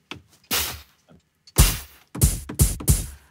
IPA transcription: pf